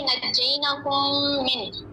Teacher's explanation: मुदग़म होंगे, दोनों मीम को मिला के पढ़ेंगे। जैसे इसमें एक एग्जांपल थी नज्जैनाकुम मिन, तो यहाँ पे 2 मीम इकट्ठे हैं तो इनको इदगाम कर लेने हैं आपस में।